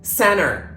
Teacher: there are times when we do not pronounce t at all when T is followed by an N it is usually dropped we do not pronounce it